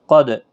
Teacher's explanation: دال ساکن پر قلقلہ ہوگا، قاف حروف مستعلیہ میں سے ہے، پور پڑا جائے گا یعنی موٹی آواز میں۔